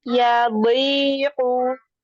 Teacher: Lidahnya di pinggir lidah bertemu dengan gigi geraham atas.